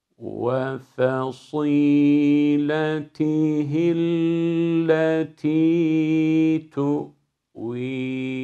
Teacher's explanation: Burada başta fasî derken sat harfinin kalınlığı F'ye sirayet etmeyecek, fasî olmayacak. F ince sat kalın. Sadı da sine döndürmüyoruz.